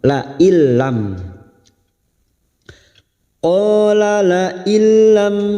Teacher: dan ro namanya bacaan Idam Bil gunah hanya masuk tanpa mendengung masuk pada huruf lam tanpa mendengung tanpa ditahan lama-lama